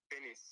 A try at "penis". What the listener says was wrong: It is the first syllable. You got the second syllable very correct. The first syllable is not pe. Although you got the stress, which you raise the pitch. Yeah, so it's penis. So you go penis. Penis. So instead of penis, you say P.